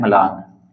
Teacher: तो यहाँ पर देखिए दो व्यंजन एक साथ आए हैं, यानी मैं और ल, दो व्यंजन एक साथ आए हैं और इनके बीच में कोई भी स्वर नहीं है। मैं के और ल के बीच में कोई स्वर नहीं है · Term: संयुक्त ध्वनि